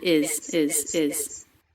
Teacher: Ending M links right into the beginning vowel, I, of is. Is pronounced with a light, weak Z sound at the end.